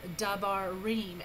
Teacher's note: So you've got your da, which is propretonic, your ba, which is pretonic, and reem, which is your tonic.